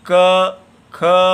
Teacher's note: इनका जो गुण कहा गया है वो है विवार, श्वास और अघोष